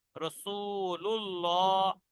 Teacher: আল্লাহ শব্দের আগে পেশ এসছে রসুলুল্লাহ, আল্লাহ শব্দের লাম পুর হবে, ল উচ্চারণ হবে।